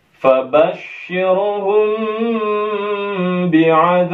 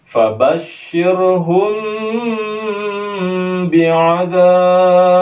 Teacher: Ba-nya ditekan. Mim sukunnya jangan lupa kita dengungkan. Kemudian ra-nya tidak boleh dibaca tebal.